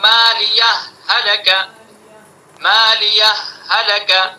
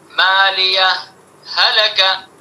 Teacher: مالیہ ہلکا، مالیہ ہلکا، یہ تو ادغام ہو گیا، اور اظہار مع سکتہ مالیہ ہلکا، اظہار یعنی ہاں کو ظاہر کریں گے اور سکتہ کریں گے، مالیہ ہلکا، تو اس میں اظہار مع سکتہ ہی بہتر ہے تاکہ دونوں کے اندر فرق پیدا ہو جائے۔